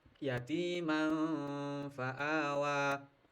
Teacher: suara nun matinya tanwin atau nun mati itu samar enggak begitu jelas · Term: Ikhfa hakiki, ikhfa haqiqi